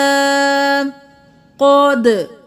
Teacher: قاف موٹا دال قلقلہ